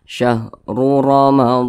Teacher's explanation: ro yang berharakat dah kemudian juga huruf ro yang berharakat fathah maka kedua-dua huruf ro ini dibaca tebal dibaca takhim